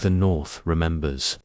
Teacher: note how the th sound is soft and doesn't look like a d or t that we usually use in Portuguese